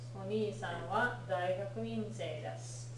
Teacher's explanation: Notice the long vowel on お 兄 さ ん. You want to be careful of that one because Oni-san sounds like Mr.